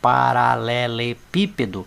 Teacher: a sílaba tônica é a anti penúltima